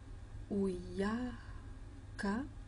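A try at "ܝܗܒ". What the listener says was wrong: Non, non, c'est un B.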